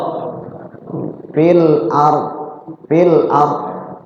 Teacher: huruf d itu salah satu huruf yang dia itu keluarnya dari sisi-sisi lidah kita ini lidahnya ini lidah sisinya mana ini ada dua sis dot itu keluarnya itu boleh satu sisi saja dari yang kanan atau boleh juga keluarnya dari yang kiri atau dari dua-duanya ya.